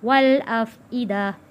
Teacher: یہاں پہ وقف میں تا ختم ہو جاتا ہے، اس کی جگہ ہا بن جاتا ہے، اور تا کا زبر یہ ختم ہو جائے گا، اس کی جگہ جزم آ جائے گا، تو یہاں گول تا ہا میں تبدیل ہو جائے گا۔